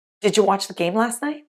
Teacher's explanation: “did you” sounds like “didja”